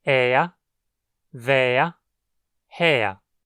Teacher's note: quando o ER for tônico e estiver no fim da palavra, vai soar como ea ou eia em português. Você pode pronunciar com um i no meio ou não.